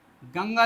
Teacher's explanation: इनका उच्चारण करते समय नाक से अधिक एवं मुंह से कम हवा निकलती है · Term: अनुस्वार